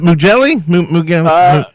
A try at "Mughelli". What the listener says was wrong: It's close. It's actually Mughelli, the G silent.